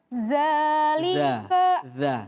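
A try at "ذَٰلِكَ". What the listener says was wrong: Tipisin lagi. Dza. Dikeluarkan lidahnya, ditempelkan gigi seri bagian atas. Dza. Jangan digigit. Dza. Dza.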